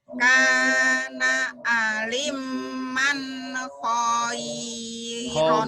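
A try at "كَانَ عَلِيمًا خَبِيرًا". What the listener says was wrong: khabira, bukan khaira itu khabira, bukan iya. Kana aliman khabiron.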